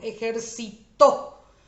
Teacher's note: es una palabra aguda porque su sílaba tónica es la última